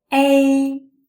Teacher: the first sound a is louder and longer than the second sound e